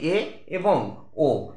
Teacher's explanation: স্বরধ্বনি উচ্চমধ্য স্বরধ্বনি কাকে বলা হয় যে স্বরধ্বনি দুটি উচ্চারণ করতে গেলে আমাদের জীব উচ্চস্বরধ্বনির উচ্চারণের সময় মুখের যে অবস্থান থাকে তার চেয়ে সামান্য একটু নিচে নেমে আসে তাই এই স্বরধ্বনিকে বলা হয় উচ্চমধ্য স্বরধ্বনি এইগুলি কোনগুলি এগুলো হচ্ছে